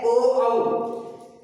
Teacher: इसका कंठ और ओष्ठ, होठ और कंठ ये दोनों काम में आते हैं, इसलिए इसका उच्चारण स्थान है कंठोष्ठ। ओ, औ, यानी जीभ भी औ, औ में दोनों होठ मिल गए।